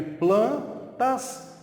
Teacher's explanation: o N aqui, na verdade, apenas nasaliza o A. Então, eu tenho, na verdade, plantas.